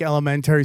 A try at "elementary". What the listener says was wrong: I've never heard anybody accent it like Elementary. Like elemen with a tree in there.